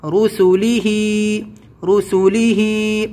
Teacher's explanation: دھیان دینا اپنی آواز پہ، بالکل بھی رسو نہیں ہونا ہے، سین کو بہت جلدی پڑھنا ہے اور آگے لام میں ملانا ہے